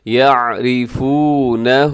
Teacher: اس لفظ کے آخر میں الٹا پیش ہے، اسے اپنے تھوڑا سا کھینچ کے لمبا کیجیے گا۔